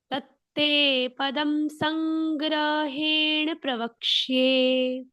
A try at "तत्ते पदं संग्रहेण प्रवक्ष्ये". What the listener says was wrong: Good better पहले से।